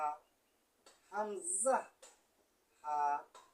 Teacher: হলকে শুরু হইতে 1 নম্বর মাখরাজ উচ্চারিত হয়।